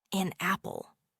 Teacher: N sound from an links directly to the A sound from apple, making it sound like a single unit